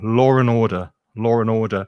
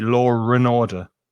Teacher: but it's interesting that there's that r sound that is not there's no letter r but we say a letter r